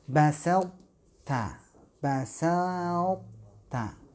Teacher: untuk huruf to itu masih menyisakan ketebalannya